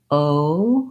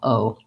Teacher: You basically relax your lips and jaw. O from a slightly more open to a slightly more closed and lax vowel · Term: diphthong